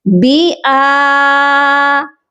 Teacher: اس کو با کر کے نہیں پڑھا جائے گا، با کی حرکت زیر ہے، اس کو ہم نے الگ پڑھنا ہے. حمزہ کی حرکت کھڑی زبر ہے، اس کو ہم نے اوپر کھینچنا ہے، با کو نیچے کی حرکت کے ساتھ ملانا ہے.